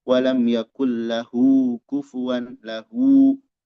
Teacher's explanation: Wa fi lahu pada lahu hu, nah pada hu-nya ini ada namanya mad silah silatun qasirah. mad silah qasiroh yang pendek, dibaca 2 harokat.